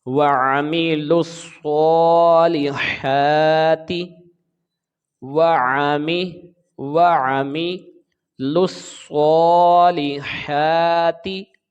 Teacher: سواد کے اوپر کھڑی زبر ہے، ایک الف کے برابر کھینچیں گے · لام کو سواد کے ساتھ ملا کر پڑھیں گے کیونکہ یہ شمسی حرف ہے، اس کا لام تعریف نہیں پڑھا جاتا، یہ الف لام نہیں پڑھا جاتا.